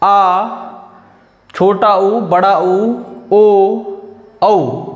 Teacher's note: जीभ के पिछले हिस्से द्वारा बोले जाने वाले स्वर। जिन स्वरों के उच्चारण में जीभ का पिछला भाग सामान्य स्थिति से ऊपर उठता है पश्च स्वर कहलाते हैं।